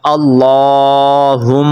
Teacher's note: تو اپ نے لام کو لمبا کرنا ہے · اپ نے لام کو لمبا کرنا ہے پڑھنا ہے کیسے اللہم میم کے اوپر اپ نے غنہ کرنا ہے